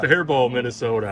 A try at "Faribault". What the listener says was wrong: Faribault, T is silent. You forget it.